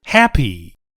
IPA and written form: ˈhæpi (happy)